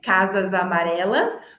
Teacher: casas amarelas som de z porque o que veio depois do s é uma vogal